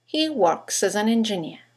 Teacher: You've got 3 words that begin with a vowel, as, an, and engineer. In connected speech, they all run into each other. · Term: phonetic links